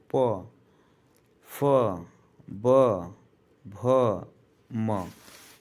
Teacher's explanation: प से लेकर म तक के सभी वर्ण होठ से बोले जाते हैं क्योंकि इस समय हमारे दोनों होठ आपस में संपर्क करते हैं